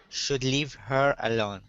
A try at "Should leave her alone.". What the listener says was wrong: There you go. That's the sound.